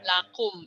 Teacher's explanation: Lakumnya idhar sapawi, jangan ditahan ya.